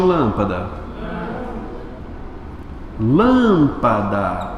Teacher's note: mais forte é o lã ou seja antepenúltima sílaba